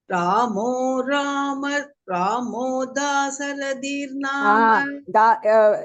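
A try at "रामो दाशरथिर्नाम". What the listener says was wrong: Wherever there is sh, you are saying sa. Ramo Dasharathir Nama.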